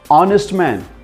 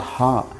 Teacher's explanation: the first letter is h but it gives us the sound ah not ha